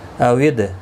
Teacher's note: دال ساکن پر قلقلہ ہوگا